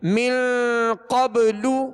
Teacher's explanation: قاف کو پر پڑھیں گے حروف مستعلیہ میں سے ہے اور من پہ غنہ کریں گے اخفا کا غنہ ہے